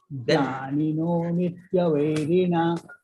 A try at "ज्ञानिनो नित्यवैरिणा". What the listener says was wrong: Vairina, it is Dirgha.